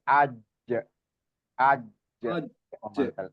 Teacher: Jaher dan siddah. Dia enggak ada hames, enggak ada rakaah. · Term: huruf jim